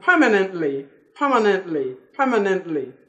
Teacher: You can see I swallow T.